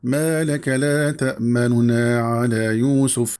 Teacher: من خیلی پست کردم و کوتاه خواندم صدای ضمه رو، تأمنون نگفتم که این اظهار می شود. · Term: راوم